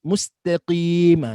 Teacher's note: Maknanya mesti membersihkan atas mim daripada mustaqim dan menipiskan dia serta matikan sin.